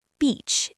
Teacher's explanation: The word beach, it's not bitch, okay? It's beach with a long E sound. Your lips stretch wide like you're smiling.